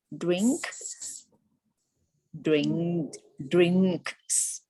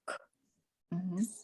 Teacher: the k is pronounced way in the back of the mouth right so your tongue stops the air on the roof of the mouth towards the back